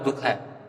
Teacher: इसमें है की आवाज आती है जब हम विसर्ग का यूज करते हैं